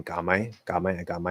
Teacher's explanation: if you're speaking really quickly you can just go straight into the m